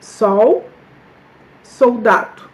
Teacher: L, qui est prononcé par OU quand il est à la fin, donc il vient à la fin d'un mot, ou bien à la fin d'une syllabe